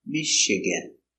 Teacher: Stress on the first syllable, Michigan.